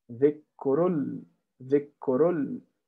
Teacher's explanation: You go from ra to lam directly.